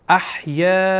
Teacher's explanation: وقتی که الف مد و همزه در یک کلمه بیایه مد متصل صورت میگیره، بنابراین به اندازه چهار حرکت این را طولانی میکنیم، مد میکشیم.